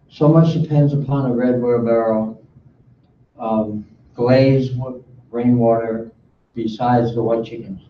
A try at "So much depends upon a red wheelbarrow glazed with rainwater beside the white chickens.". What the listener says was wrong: I heard it besides.